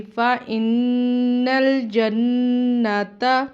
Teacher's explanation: دونوں بار غنہ کیا اور اس کو 1 الف کے برابر لمبا کیا غنے کو